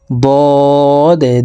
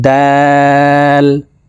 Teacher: ضاد হরফ মোটা করে উচ্চারণ করতে হবে, দাল হরফকে পাতলাভাবে উচ্চারণ করে পড়তে হবে।